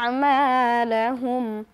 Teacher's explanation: এবং এখানে জবরের বাম পাশে খালি আলিফ এসেছে মাদের হরফ আমরা এক আলিফ টান দিয়ে পড়ব।